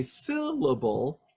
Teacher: you can hear me going up on the word syllable, on the first part of that word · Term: stress-based inflection